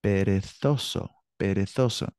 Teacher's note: The Z in Spain is pronounced like a TH, like we say Thursday.